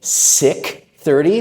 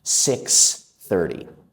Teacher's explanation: So many students say sick 30 like sick like you have a a flu or something like that. We have to be careful to get that ks sound out.